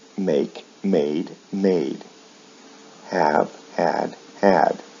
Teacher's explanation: and notice the patterns verbs like make with verbs like make the vowel sounds remain the same in the past and past participle but the final consonant sound is changed to a d